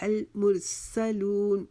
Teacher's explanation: मीम के आगे जो रा है उसको हमने मोटा पढ़ना है। मुरसलून, इसको मुरसालून नहीं पढ़ेंगे, मुरसलून।